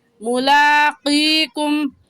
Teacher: ملاقیکم میں میم کے اوپر غنہ نہیں کریں گے، کیونکہ میم ساکن کے بعد با یا میم آ جائے تو اس صورت میں غنہ ہوتا ہے، اس کے علاوہ کوئی حرف آ جائے تو غنہ نہیں ہوتا.